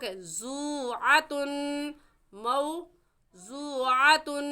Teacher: واو ساکن سے پہلے پیش آ گیا تو واو مدہ ہے، اور واو مدہ کو کھینچ کر پڑھیں گے